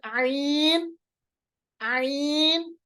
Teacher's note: इनको पढ़ने में गले का बीच वाला हिस्सा, मिडल ऑफ द थ्रोट को हम इस्तेमाल करते हैं, यूज करते हैं, जो कि थोड़ा सा टफ होता है।